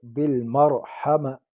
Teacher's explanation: بالمرحمہ بل لام کو باریک پڑھیں گے، مر را کو پر پڑھیں گے، را ساکن ہے آگے زبر ہے، اس کو پر پڑھیں گے · وقف کے حالات میں گول تا کو ہائی ساکنے سے بدلیں گے